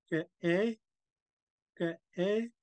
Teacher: You could really hear the glottal stop. Ge-e. Because there's a slight pause.